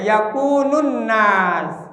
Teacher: Yakun nunnya ada tasdid. Harus dibaca gun. Nah, gunanya 2 harkat boleh, 3 harkat boleh, ya.